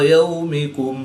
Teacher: واو ساکن سے پہلے یا پر زبر ہے تو واو لین، اس کو لمبا نہیں کریں گے